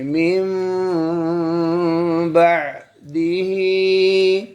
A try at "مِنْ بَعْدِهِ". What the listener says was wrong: ये ही को नाक में क्यों पढ़ दिया ही